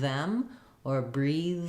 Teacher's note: I might need a little more Force to keep my voice on and keep that sound flowing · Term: voice th